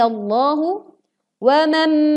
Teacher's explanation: tebal ya Ah lazani allohu wanwan dengungkan mim bertasydid di sini kita meleburkan nun sukun ke huruf mim dengan disertai dengung